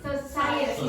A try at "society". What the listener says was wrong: No, you wouldn't say this like a strong vow.